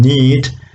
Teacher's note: in all these three sounds, we have the air is escaping through the nasal cavity, the oral cavity is closed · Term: nasal sounds